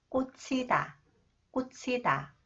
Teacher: 구두굽에 밟히다. When 히읗 comes after the final consonant 지읒, 지읒 combined with 히읗, it is pronounced as 치 sound.